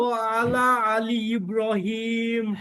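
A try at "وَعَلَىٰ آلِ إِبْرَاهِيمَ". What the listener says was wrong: হ্যাঁ, ওয়া আলা একটু টান হবে, একটু টান হবে ভাই, বুঝতে পারছেন? ওয়া আলা আলি, আলি একটু একটু একটা ঢেউয়ের মতো একটা টান হবে। হ্যাঁ, আইন এবং হামজার পার্থক্য করতে হবে। আইনটা শক্তি দিয়ে পড়তে হবে, আর হামজাটা শক্তি ছাড়া পড়তে হবে।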